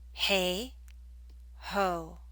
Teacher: It's the o in ho that makes the back of your tongue high. In contrast, when you say hey, the a makes the front higher.